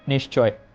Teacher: বিসর্গের পরবর্তীতে আমরা তালব্য শেষ উচ্চারণ করবো